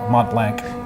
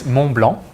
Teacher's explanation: Basically, you don't pronounce either the T or the C.